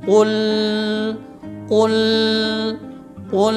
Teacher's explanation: dia membacanya lam ini dengan ditekan terlalu tekan sehingga terjadilah dengung. Dia membacanya begini, qul qul qul.